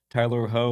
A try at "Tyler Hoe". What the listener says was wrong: It's actually pronounced Tyler Hugh. I know it's spelled like it might be ho,